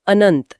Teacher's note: न के ऊपर बिंदी और उसके बाद त। त वर्ग का है तो बोलते समय जीभ दांतों को छूती है और अनुस्वार आधा न बनकर अनंत का रूप ले लेता है।